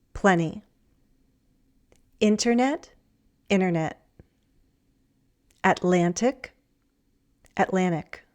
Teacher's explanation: we often drop the t after an n and before an unstressed syllable.